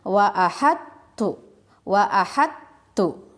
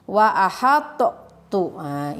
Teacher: memasukkan huruf tho ke dalam huruf ta jadi eh taunya tidak terbaca cara membacanya waah adtu wahat tuh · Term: idgham mutaqaribain